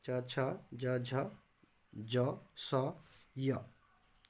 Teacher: जिह्वा का अग्र भाग कठोर तालु को स्पर्श करता है, मतलब जिह्वा का सामने वाला भाग, जीभ का सामने वाला भाग तालु के सामने वाला भाग को स्पर्श करता है। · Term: तालव्य